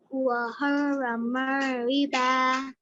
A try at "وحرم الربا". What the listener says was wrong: Just stretch that for 2 counts at the end. وحرم الربا.